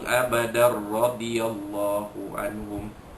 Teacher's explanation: Abadar radhiyallahu anhum, bila bersambung wasal, jadilah hukumnya idgham bila gunnah, iaitu tanwin bertemu dengan huruf ra, memasukkan bunyi tanwin ke dalam huruf ra tanpa dengung, itu disebut idgham bila gunnah ataupun idgham kamil yang sempurna.